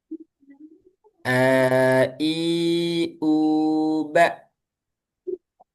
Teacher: makhrajnya alhalqu tenggorokan dari hamzah